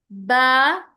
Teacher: دونوں ہونٹوں کو آپس میں ملاتے ہوئے اس کا مخرج نکلتا ہے۔ با حروف شفتین ہے، یعنی ہونٹوں سے ادا ہونے والا لیٹر ہے، جب ہم دونوں ہونٹوں کے گیلے حصے کو لگاتے ہیں با تو اس کا مخرج ہونٹوں سے نکلتا ہے۔